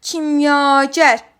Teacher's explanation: burada A saiti uzun tələffüz olunur və uzun tələffüz olunan saitimiz ikinci hecadadır